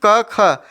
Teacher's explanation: का वर्ग का उच्चारण स्थान किससे होता है, कंठ से होता है